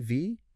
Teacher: It's a voice consonant. That vibration is key.